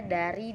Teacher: konsonan apikoalveolar hambat bersuara